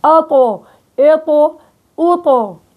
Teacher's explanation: ارتفاع أقصى اللسان ووسط اللسان، الإطباق هو وسط اللسان، إلصاق ظهر اللسان بالحنك الأعلى